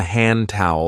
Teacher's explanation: Many speakers drop the D sound, especially when it occurs between two consonant sounds.